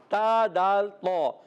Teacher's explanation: تا کا مخرج بتا دیتا ہوں. تا ادا ہوتا ہے زبان کا سرا اوپر کے دانتوں کی جڑوں سے. تا، دال، طا، ان کو کہتے ہیں حروف نطعیہ.